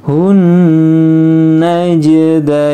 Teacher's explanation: Karena ini alif lam samsiah di depannya ada nun. Nun maka ketika tasdid maka dia gunnah atau mendengung ya. Sehingga ditahan dulu. · Jimnya qalqalah sughra ya. Kemudian dain dibaca panjang ya.